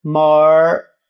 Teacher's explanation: Preste atenção que o more, que eu escrevo M-O-R-E, more, eu falo more, e o R é aquele R retroflexo. Lembra o R do interior de São Paulo? More, que a língua vai lá pro palato.